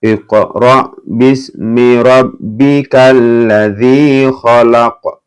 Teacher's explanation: Khalaq mantul ya karena qalqalah ini.